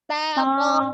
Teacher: Masih to begitu ya. Ya, Jadi to, dibuka lagi mulutnya. To, pangkal lidahnya naik.